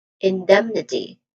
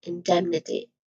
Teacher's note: this primary stress is on dem